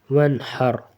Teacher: واو نون زبر ون، حا را زبر حر، ونحر وقفا، ونحر، یہ نون ہے اس کے بعد ہا ہے اور یہ را، تو را کے اوپر سکون ہے اور اس سے پہلے زبر ہے تو اس کو موٹا پڑھیں گے را کو